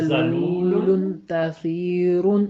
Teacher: تنوین جو ہے وہ دراصل نون کی آواز ہوتا ہے، تو اس میں ہم نے تھوڑا سا غنہ کرتے ہوئے ان کی ادائیگی کرنی ہے